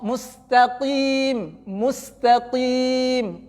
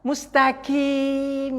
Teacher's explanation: Hati-hati, qaf itu tidak ada anginnya